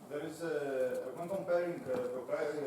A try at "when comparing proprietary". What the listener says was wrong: You need to pronounce the consonants more clearly, each and every one, so I can hear each and every consonant.